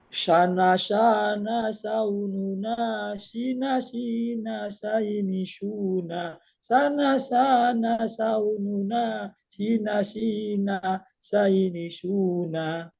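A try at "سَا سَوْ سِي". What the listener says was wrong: Masya Allah, tabarakallah. Zip, cukup, bagus.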